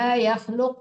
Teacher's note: boleh berhenti situ dipantulkan qofnya karena itu huruf qqalah karena kita berwaqf coba lagi itu wakaf